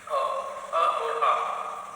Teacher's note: अ और आ, इसका उच्चारण स्थान कंठ होता है